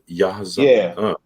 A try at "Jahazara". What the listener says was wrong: Yeah, the J is the H sound.